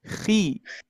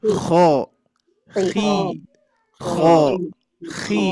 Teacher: tetap dalam keadaan tebal tapi memang berkurang ketebalan ya